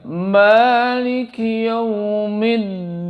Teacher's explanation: dalnya ada tasdid berarti harus nempel. Dinnya harus nempel.